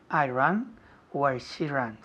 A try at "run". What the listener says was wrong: Run, no ran. Run. Es un poco cerrado. Tienes la boca cerrada.